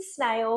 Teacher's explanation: Remember, if you mean snail, you have to use that long s sound